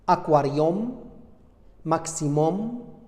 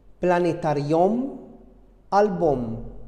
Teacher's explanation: um se prononce om à la fin de certains mots généralement identiques au mot latin